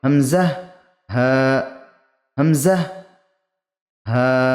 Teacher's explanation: হালকের বা কণ্ঠনালীর শুরু বা নিম্নভাগ হতে উচ্চারিত হয় হামজাহ হা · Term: হামজাহ ও হা